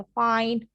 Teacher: फाइन अगर आप बोलते हैं बकायदा फील होता है, नाक से आवाज निकलती है आपकी बकायदा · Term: व्हीलर